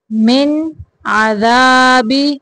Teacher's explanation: من نون کے بعد عین آ گیا ہے حروف حلقی میں سے، یہاں پہ اظہار کا قاعدہ ہے